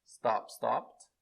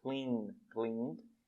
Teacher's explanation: sem vibração, som de T, stop, stopped. Com vibração, som de D, clean, cleaned.